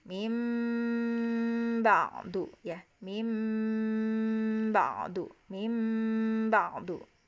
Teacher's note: Min ba'di di situ. Min ba'di kita dengungkan jadi mim ya. Karena hukum iklab kan jadi m di situ.